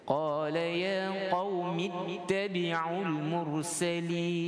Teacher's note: Qaumi ittabi'ul, di situ kita haz pada bacaan, kita hilangkan hamzah wasal. Kita tak baca qaumi ittabi'ul.